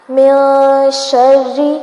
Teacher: یہاں پر من نون کی آواز کو ناک میں لے جائیں